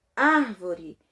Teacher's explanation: Quando eu vou separar a palavra árvore em sílabas, eu falo uma das sílabas mais forte. Árvore, que é a sílaba ar. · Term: sílaba tônica